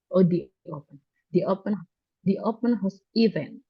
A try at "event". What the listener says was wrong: Event. Not E, but event. Event.